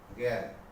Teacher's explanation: এখানে আকারটা হয়ে যাচ্ছে একার